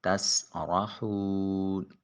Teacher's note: تسرحون، سین کی حرف صفیریہ ہے، ادائیگی کے وقت سیٹی کی آواز آئے گی، اور را کے اوپر زبر ہے، لہٰذا مفخم موٹا اور پر کر کے ادا کریں گے۔ حون میں واو ساکن ما قبل مضموم ہے، پیش والا ضمے والا ہے، لہٰذا ایک الف کے قیم مقام اس کو لمبا کریں گے۔